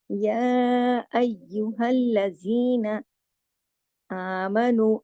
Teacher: یا کو دیکھیے کھڑی زبر اور مد کے ساتھ ہے نا، یا پورا اس کا حق ادا کرنا ہے، کھینچنا ہے اس کو، اس کی کھڑی زبر کو بھی اور اس کو مد کو.